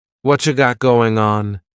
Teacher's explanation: Whatcha is what plus you. You becomes cha.